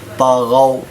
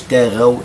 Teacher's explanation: وثمود، الثاء معجمة أحبابك، وثمود الذي ذال معجمة، الذين طغوا، طاء والغين كلها مفخمة، طاء حروف التفخيم، حروف الاستعلاء، قد خص ضغط، طغوا، ما نقولش تاغوا لأن إذا نطقت الطاء مرققة تصبح تاء.